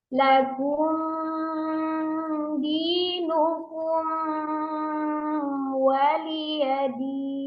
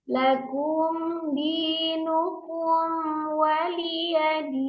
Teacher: Seharusnya mim sukun bertemu dengan huruf dalnya itu izhar, tidak dipanjangkan gunnahnya, sama dengan mim sukun bertemu dengan wawnya.